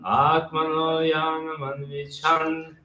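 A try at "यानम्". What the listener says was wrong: It's not Yanam, it's Yanam. It's short A.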